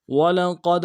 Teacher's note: قوف کو دال کے سامنے لانا ہے، موٹا کرتے ہوئے دال قلقلہ ہوگا۔